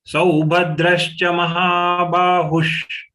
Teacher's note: Here, sau, ha, ba, they are the three long letters. The visarga to be pronounced as half sh. Just release the air while concluding hu.